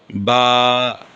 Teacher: দুই ঠোঁটের ভিজা অংশ থেকে উচ্চারণ হবে বা। এই যে ভিজা অংশ ভিতরের দিকে দুই ঠোটের ভিতরের দিকে যে ভিজা অংশ এই অংশ থেকে উচ্চারণ হবে বা।